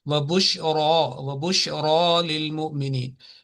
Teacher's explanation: this ra with a vertical fatha, it will be prolonged with tafkhim, meaning with a thick ra